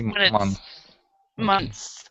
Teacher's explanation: when it's months months so we don't actually say it that we say it's more like a TS instead of a th